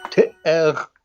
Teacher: Te'er with a double glottal stop